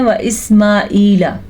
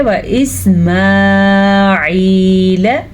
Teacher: اکثر لوگ پڑھتے ہیں و اسماعیل ایسے نہیں پڑھنا. ہم نے اس کو پڑھنا ہے و اسماعیل لام کو کھینچ کے نہیں پڑھنا